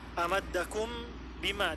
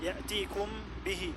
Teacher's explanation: ikhfa syafawi adalah membaca mim sukun dengan dipanjangkan gunnahnya